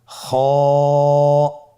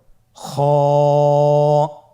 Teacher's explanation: খ হরফটির মাখরাজ হলো কন্ঠনালীর শেষ ভাগ হতে উচ্চারণ করতে হয়।